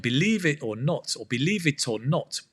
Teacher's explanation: Again, that T in the it, sometimes we drop that sound.